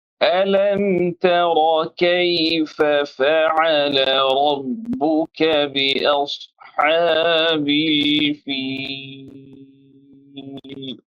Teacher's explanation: یہاں تجوید کا ایک رول عمل میں آ رہا ہے۔ یہاں پر ہم اظہار شفوی کر رہے ہیں، یعنی یہاں پر کوئی غنہ نہیں کیا جائے گا۔